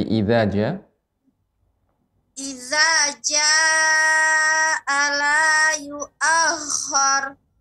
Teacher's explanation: Ra-nya tebal dan kha-nya juga